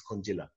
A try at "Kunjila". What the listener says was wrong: The J is silent.